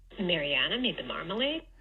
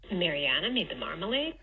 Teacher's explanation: you do have an intermediate phrase boundary with an H dash phrase accent in the middle of this one.